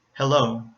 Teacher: you hear a light L sound because it comes at the beginning of a syllable